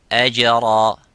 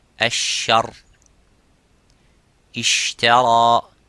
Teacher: Jim and qaf are the same by holding and touching that parts. The parts touch each other without leaving the gap. But the sheen has a gap, and that let the air slightly go.